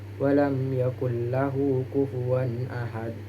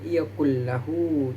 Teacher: Idgham bila gunnah dibaca tanpa adanya dengungan. Ini terjadi jika nun sukun atau tanwin bertemu dengan huruf ra dan lam.